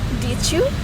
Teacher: the sounds D and J merge into like the J in judge